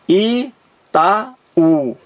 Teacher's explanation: Porque este U aqui está formando um hiato, ó. 2 vogais em sílabas diferentes. Itaú. Aqui há um hiato.